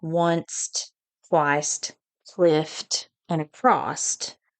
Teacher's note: usually words ending in S and F in standard English can be produced with a final T in vernacular English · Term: intrusive T